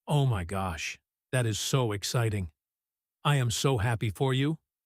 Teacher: Faster speech, higher pitch, and stretched out vowels for emphasis. · Notice how a word like so might be stretched out longer than usual. Almost like so happy to emphasize genuine excitement. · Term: excitement and enthusiasm